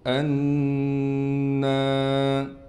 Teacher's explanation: انا، حمزہ کو نون سے ملانا ہے، نون پر غنہ کرنے کے ساتھ ساتھ نون کے بعد الف ہونے کی وجہ سے نون کو ایک الف کی مقدار کھینچیں گے